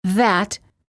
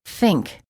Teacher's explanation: there are two th sounds in English the voiced th as in that and the voiceless th as in think